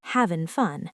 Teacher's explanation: Drop the g in having because in natural speech, native speakers often say having fun.